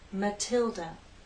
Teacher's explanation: stress on the second syllable Matilda the t is stressed so we have a true T sound